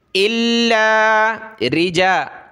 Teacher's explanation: الا لام کے اوپر تشدید ہے تو اس کو جمع کر سختی کے ساتھ پڑھنا ہے